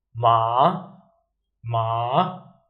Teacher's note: The third tone, we start from a bit high, we go down, and then we go up again, just like the shape of the line.